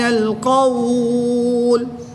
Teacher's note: وقف کی حالت میں مد لین عارض ہوگی، 2 سے 3 الف تک کھینچ کر پڑھیں گے